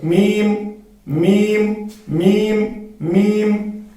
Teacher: जब हम मीम को अदा करेंगे तो मीम को अदा करते वक्त हमें खुशकी वाला हिस्सा मिलाना है, बाहिर वाला हिस्सा मिलाना है।